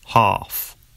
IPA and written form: hɑːf (half)